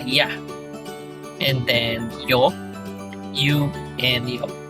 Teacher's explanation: By adding this extra line, so a Y sound gets added to each vowel